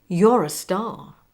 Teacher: Notice the linking R from re or r in your to the word a.